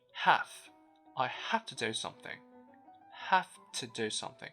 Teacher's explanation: as for the word have, we tend to soften the voiced consonant at the end. We don't say have, but have instead. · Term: voiceless consonant